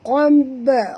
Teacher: Okay, qamb, huruf qaf tebal, jangan baca qamb tapi baca qab. Okay, dan ba ini apabila dia mati di tengah-tengah kalimah macam ini, kita kena lantunkan bacaannya qalqalah sughra ya. Qamb, macam tu baca dia, bukan kab tapi bunyi dia qamb.